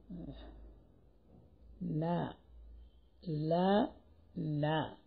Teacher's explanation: ലാമിന്റെ അല്പം താഴെയാണ് നൂനിന്റെ മഹ്റജ്. ലാ പറയുന്നതിന്റെ അല്പം താഴെ നാവ്, നാവിന്റെ തല. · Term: നൂൻ